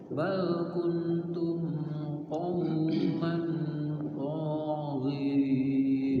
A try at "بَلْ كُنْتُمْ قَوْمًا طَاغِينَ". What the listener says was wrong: Ya, ikhfanya dikit lagi. Kuntum qauman taghin. Dua-duanya ikhfa itu. Kuntum qauman taghin.